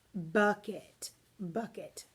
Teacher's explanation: the stressing comes on the buck not the at therefore your accent is going to be on the first syllable of the word bucket